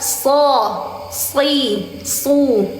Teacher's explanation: Makhrijul huruf shad itu di ujung di ujung lidah antara gigi atas dan bawah